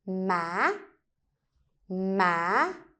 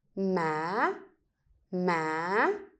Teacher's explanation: you go low and then pick it up high. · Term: up tone